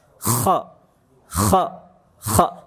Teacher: Bedanya di gesekan jemaah, gesekan di tenggorokan atas. Kalau kha, gesekannya agak kasar tuh di tenggorokan atas.